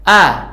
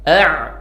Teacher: Hamzah keluar dari pangkal tenggorokan sedangkan Ain keluar dari tengah tenggorokan